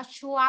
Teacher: เสียงหนึ่งก็คือเสียงสามัญไม่มีเสียงสูงเสียงต่ำ